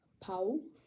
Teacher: You don't get louder, you don't get higher, it's just longer. The difference in length is phonemic, so the meaning does change depending on if there's a longer hold or a shorter hold.